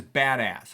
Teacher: the words are both stressed